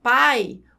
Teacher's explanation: quando eu falo a palavra pai o a é muito mais forte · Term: ditongo decrescente